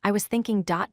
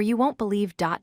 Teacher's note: When you use rising intonation on an incomplete statement, it tells the listener you have not finished speaking.